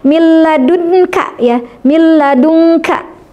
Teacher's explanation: Ya, jadi masuknya atau leburnya huruf pertama yakni nun sukun atau tanwin, huruf lam atau ro ini masuk dengan sempurna tanpa disertai gunnah · Nah, jadi suara nunnya masuk ke huruf lam, dan ini sempurna masuknya, tidak tersisa sifat dari huruf nun seperti pada idgham bi gunnah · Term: idgham bila gunnah